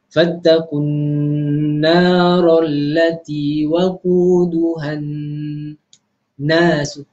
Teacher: Nah, itu pun perlu pada dengung nara, fattaqun, dengar tu huruf nun dia lama sedikit sebutan dia